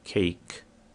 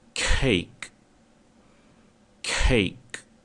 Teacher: o som de K, é representado por um som também explodido, ou seja, não é cake, e sim cake.